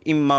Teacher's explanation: پھر نون کا میم میں ادغام کر دیا مخرج کے قریب ہونے کی وجہ سے تو اما ہو گیا۔